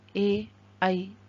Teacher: कंठ तालु दो उच्चारण स्थान एक साथ होते हैं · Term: कंठ तालव्य